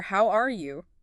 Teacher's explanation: that rising pitch makes it sound warm, welcoming, and genuinely curious about the other person's well-being. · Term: rising intonation